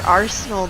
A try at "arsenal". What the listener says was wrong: Well, your pronunciation was a little heavy on the front part there.